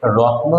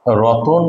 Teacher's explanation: মানে রত্ন ছিল, এটা উচ্চারণ করাটা একটু কঠিন, তাই আমরা উচ্চারণ সহজ করার জন্য এর মাঝখানে একটা অতিরিক্ত অ এনে একে রতন বলি